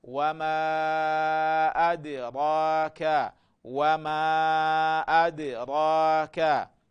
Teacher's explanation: hii dali yetu ina sukun, kwa hiyo hapa tunatakiwa tuifanye qalqala